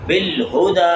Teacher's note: ہا جو حلق کے نیچے والے حصے سے ادا ہوگی